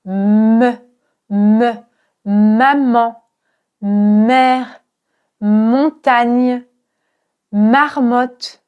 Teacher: Pour bien produire le me, tu dois fermer tes lèvres et laisser passer l'air par ton nez.